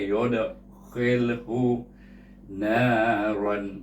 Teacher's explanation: Dal adalah huruf qalqalah dibaca dengan qalqalah sughra